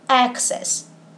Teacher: we pronounce this word access with a stress on the first syllable. So remember that there's only one way to pronounce the word, even if we are using it as a verb or a noun, and that is access.